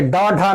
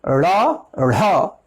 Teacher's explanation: उत्क्षिप्त यानी फेंका हुआ। इनके उच्चारण में जिह्वा एक झटके से उच्चारण करती है, मूर्धा को स्पर्श कर एक झटके से नीचे की ओर आती है, इसलिए इनको उत्क्षिप्त व्यंजन वर्ण की संज्ञा दी गई है।